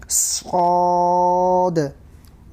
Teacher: زبان کی نوک کو نیچے کے دانتوں کے جڑ میں لگانے سے صاد ادا ہوتا ہے